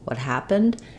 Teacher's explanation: even though it's a question my intonation is not going to be rising because I have the question word what